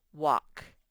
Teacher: the l sort of makes the a say ah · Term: silent l